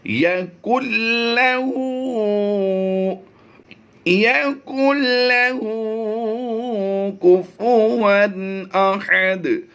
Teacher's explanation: ہم نے اس نون کو اس لام میں مدغم تو کرنا ہے لیکن ہم نے اس نون کو چھوڑنا نہیں ہے اور غنہ بھی نہیں کرنا۔ یَقُل لَّهُ کُفُوًا احد، کفواً نہیں کریں گے۔ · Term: ادغام بلا غنہ